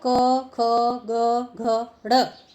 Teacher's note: क वर्ग जो है वो कंठ से बोला जाता है